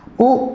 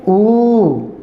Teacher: जो ह्रस्व ऊ है उसको बोलने में अपने को 1 सेकंड लेनी है, तो बड़े या दीर्घ या गुरु ऊ को बोलने में 2 लेना है, 2 सेकंड का समय लेना है।